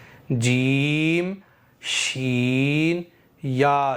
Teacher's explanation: ज़बान का बीच ऊपर के तालु पर लगा करके कहेंगे